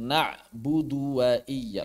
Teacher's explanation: Karena harusnya tidak panjang, langsung na'budu wa iya.